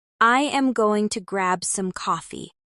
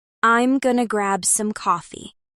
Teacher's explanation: Native speakers shorten and blend words all the time. Going to becomes gonna.